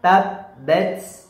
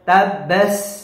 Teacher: Kita harus berikan desis napas yang keluar, ya, di antara gigi seri bawah dan gigi seri atas. Bacanya tabbat.